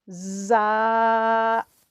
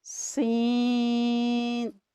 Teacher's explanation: ان حروف کو ادا کرتے ہوئے سیٹی کسی آواز آتی ہے، اس لیے انہیں حروف صفیریہ کہتے ہیں۔ اس میں زبان کی نوک سامنے کے دو دانتوں کے اندرونی کنارے سے ٹکراتی ہے۔